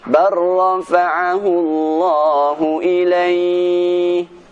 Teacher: Huruf yang pertama tidak dibaca, kita langsung masuk ke huruf yang kedua, sehingga huruf yang kedua ini menjadi huruf yang bertasydid. Yaitu yang pertama, pada contoh huruf lam mati bertemu dengan huruf ra, terdapat di surat An-Nisa ayat 158 berbunyi, bar rafa'ahu Allah. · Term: idgham